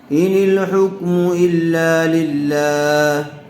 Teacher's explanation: لفظ اللہ کی لام سے پہلے زیر آئی ہوئی ہے، اس لیے لفظ اللہ کی لام کو باریک پڑھیں گے